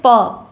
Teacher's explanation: प वर्ग का उच्चारण स्थान ओष्ठय है।